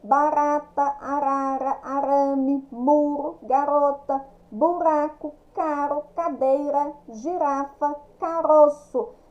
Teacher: Sempre tem uma vogal antes e uma vogal depois. Palavras com R brando, tá? é o R que sai tremendo